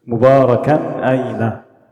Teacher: So, you have the tanween followed by a hamza. We've pronounced the tanween very clearly. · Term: idhar